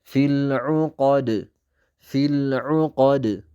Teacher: ቀልቀላ አርግተን ወይንም ደግሞ እቺ ማስተጋባት ያላት ድምፅ አርግተን እናቆማታለን።